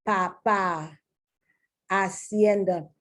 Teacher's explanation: the A as ah, closer to the way you pronounce it in Latin-based languages